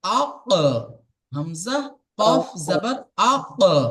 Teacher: জিভের গোড়া তার বরাবর উপরের তালুর সাথে লাগিয়ে উচ্চারিত হয় 2 নক্তাওয়ালা কফ